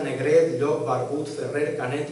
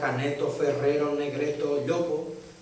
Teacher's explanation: Apocopava la O final